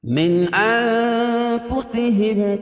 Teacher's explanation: نون ساکن کے بعد حروف اخفا کے 15 حرفوں میں سے فا ہے، تو یہاں ناک میں آواز کو چھپا کر پڑھیں گے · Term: اخفا حقیقی